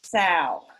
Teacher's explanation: we have virtually no dark L at the end of our words at all